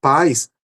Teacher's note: No primeiro caso, pais, a sílaba tônica é pá